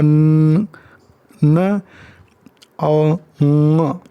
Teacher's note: ये nasal sound हैं students, इनकी ध्वनियाँ नाक से आती हैं।